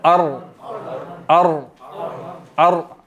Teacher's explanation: रा को भी मोटा पढ़ा जाएगा, ठीक है, पुर पुर करके पढ़ा जाएगा।